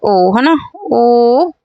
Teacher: तो ओ का उच्चारण स्थान क्या हो जाएगा? कंठ ओष्ठ हो जाएगा। कंठ ओष्ठ हो जाएगा।